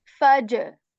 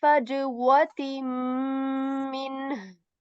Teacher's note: there comes a letter from the letters of qalqala, which is jim, faj. So the voice is going to bounce back.